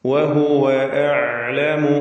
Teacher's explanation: വാവുകൾ വ്യക്തമായി ചുണ്ടിൽ നിന്ന് തന്നെ ഉച്ചരിക്കുക. 2 ചുണ്ടുകൾ ചേർത്ത് വാവ്. വഹുവ അഅലമു, അഅലമു ഐന് വ്യക്തമാക്കുക, തവസ്സുത്തിന്റെ ഹർഫാണ്.